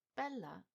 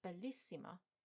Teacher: Bella is stressed on the penultimate syllable, but bellissima is stressed on the first I.